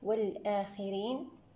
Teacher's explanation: الخاء مفخمة من الدرجة الخامسة لأنها مكسورة، وهنا تفخيمها نسبيا لأنها مستعلية وغير مطبقة.